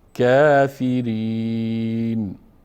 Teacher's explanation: اینجا بعد از کاف هم حرف ف هم مکسور است و ر هم مکسور است، ر باریک خوانده میشه